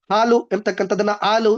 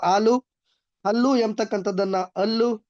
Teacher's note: ಮೈಸೂರು ಬೆಂಗಳೂರು ಕೋಲಾರದ ಕಡೆಗಳಲ್ಲಿ ಹಕಾರ ಲೋಪ ಆಗ್ತದೆ